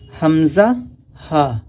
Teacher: حمزہ ہا شروع حلق سے، یعنی کہ حلق کا سینے کی طرف والا جو حصہ ہے شروع حلق، وہاں سے حمزہ اور ہا ادا ہوتے ہیں